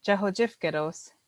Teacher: what they call a sliding T, which means it slides over, that T sound slides over to that os. And so when you say it, Jahojifgedos, it sounds like that T is attached to it.